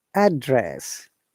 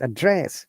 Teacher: the first word, address, noun, it is a rising intonation to falling intonation. Address. Now, when it is used as verb, the intonation is just changed.